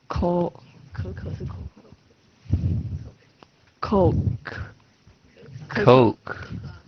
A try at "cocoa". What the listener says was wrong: Yeah, cocoa, not Coke. C-O-C-O-A. Cocoa. Cocoa.